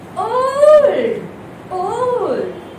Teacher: That O stretches, gives it two sounds altogether.